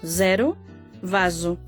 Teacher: O S simple e o Z son tamén sonoros en portugués